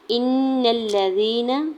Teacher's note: لام کے اوپر سنگل زبر کی بیس پہ لام کو کھینچنا نہیں ہے۔ یا ساکن سے پہلے زال کے نیچے زیر ہے یا مدہ ہو رہا ہے، دو حرکت کھینچ کے ادا کریں گے۔